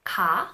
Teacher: is a sound that is very neutral there is no voicing there is minimal aspiration kha with an extra dash means that the sound is aspirated